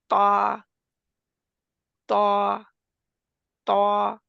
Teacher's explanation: जुबान की जब नोक जो है वो ऊपर वाले दो दांत जो है उनके गम को लगती है दरमियान में जो दरमियानी हिस्सा उभरा हुआ होता है उसको दरमियानी